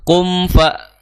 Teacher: Ya, kalau kita melihat dari sifat-sifat yang dimiliki oleh huruf mim, ya, maka kita akan melihat di sana ada sifat gunnah, ya, dari huruf mim. Maka ketika kita baca kum, maka harus ditunaikan gunahnya. Kum fa, jangan sampai kum fa, ya, kum fa.